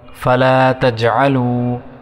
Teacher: لام کے بعد الف 1 سیکنڈ تک کھینچیں گے، تجعلوا، عین کو صحیح طرح ادا کریں گے تلفظ کے ساتھ، تجعلوا، وا کو 1 سیکنڈ تک کھینچیں گے.